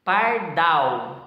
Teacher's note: Agora, a sílaba tônica aqui na última, pardal. Então, dal é a sílaba tônica e o par, sílaba átona, que é pronunciada com menos intensidade.